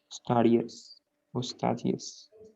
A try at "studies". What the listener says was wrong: Okay, but the pronunciation is studies. La E no se pronuncia, okay? Studies.